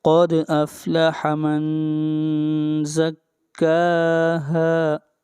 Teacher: من کے اوپر اخفا ہوگا، آواز کو ناک میں لے کر جائیں گے